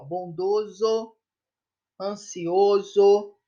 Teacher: Observa-se que a letra S, nesses casos, tem o som de Z